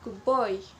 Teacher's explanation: when D is followed by B, it usually changes into a B sound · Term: Assimilation of place